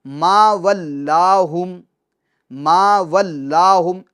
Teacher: اللہ عز و جل کے علاوہ جو لام ہے وہ تمام حالتوں میں باریک پڑھے جائیں گے، پور نہیں پڑھیں گے